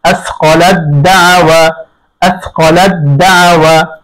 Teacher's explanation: আসকালাদ দাওয়া, তা সাকিন পরে দাল আসছে, দাল এবং তায়ের মাখরাজ এক, সিফাত ভিন্ন। আসকালাদ, এই তাকে দালের মধ্যে ইদগাম করে দিতে হবে পরিপূর্ণ